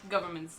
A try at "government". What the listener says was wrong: Government. No, you're putting too many syllables in that. It's government.